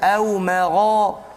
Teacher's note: Jadi tebalkan dia au magha, tak mesti muncung. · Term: isti'la